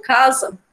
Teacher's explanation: o CA, né, ele soa mais forte do que o SA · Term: sílaba tônica